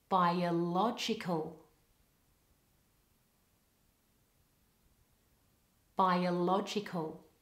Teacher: I link the first two vowels with a weak y sound